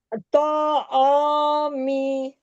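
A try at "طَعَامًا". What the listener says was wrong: می نو نا نہیں پڑھنا ہے، ساکن کرنا ہے نا. دو زبر میں تو ایک زبر پڑھتے ہیں، دو زیر ہے نا یہاں پر، اس کو ساکن کریں. دو زیر، دو پیش، زبر زیر پیش کوئی بھی ہو، آخری حرف کے اوپر سکون آ جائے گا.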